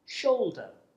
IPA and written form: ˈʆəʊldə (shoulder)